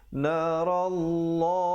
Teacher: Ra-nya dibacakan tebal kerana baris atas, dan lafzul jalalah walaupun kelihatan baris 1 tapi tetap dibacanya dengan 2 harakat.